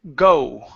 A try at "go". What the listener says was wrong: open your mouth more at the very beginning.